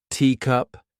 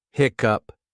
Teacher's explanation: When you say teacup, where in your mouth does that come from? Front. Top. When you say hiccup, where does that come from? Back. Lower.